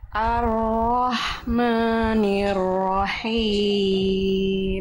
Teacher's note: Himnya dilafalkan dari tengah tenggorokan.